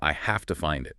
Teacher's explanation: The V sound just disappears or changes to an F sound before the two. It becomes a single smooth movement.